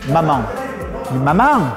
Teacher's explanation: le a il est pas nasalisé c'est un a c'est MAM il y a deux étapes on décompose la syllabe · on fait une voyelle dite orale, c'est-à-dire qu'on n'envoie pas l'air dans le nez de suite, on dit attends, et on envoie l'air après